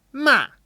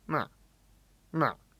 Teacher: the thing that makes the fourth tone so distinct is how high it starts